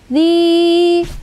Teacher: Nalladzi, zi itu mad tabi'i ya, kasrah bertemu dengan ya sukun disebut dengan mad tabi'i, dipanjangkan 2 harokat atau 2 ketukan.